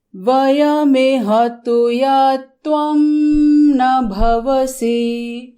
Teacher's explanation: पाठ करते समय जो छंद का लय होता है उसमें खत्म करते करते वहाँ पर सी थोड़ा सुनने में दीर्घ लगता है।